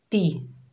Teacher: ताकि नीचे ज़ेर बगैर खींचे पढ़ेंगे ती, यानी ते नहीं पढ़ेंगे, ते मजहूल होता है, पढ़ेंगे ती